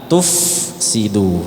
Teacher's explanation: harusnya pakai Fa tu dialirkan angin